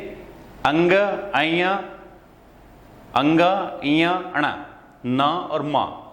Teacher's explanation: ये नासिका से, नाक से उत्पन्न होती है, इसलिए इसे नासिक्य ध्वनि कहते हैं।